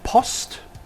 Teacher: the mid-low back vowel O as in Post